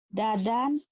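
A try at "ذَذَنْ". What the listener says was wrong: Jangan dadan kan ada titiknya. Kalau nggak ada titiknya dadan ya, dadan. Ini kan ada.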